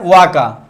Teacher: वा का उच्चारण स्थान दंतोष्ठ होता है, दंत प्लस ओष्ठ